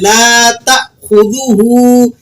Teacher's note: لام کو کھینچ لیں، اس کے بعد الف مدہ لگا ہوا ہے